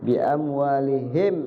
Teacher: kalau izhar syafawi artinya jelas di bibir mimnya terbaca jelas